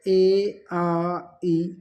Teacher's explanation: मौखिक स्वर जिसे निर्नुनासिक स्वर भी कहते हैं, जिन स्वरों के उच्चारण में वायु केवल मुंह से निकलती है वह स्वर मौखिक स्वर या निर्नुनासिक स्वर कहलाते हैं